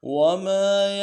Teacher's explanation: ما کو ایک الف دار میں کھینچنا ہے، الف مدہ ہے